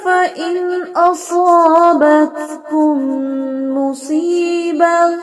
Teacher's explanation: صوت کی سیٹی نمایاں کریں اور بتکم میں تا کا ہم واضح کریں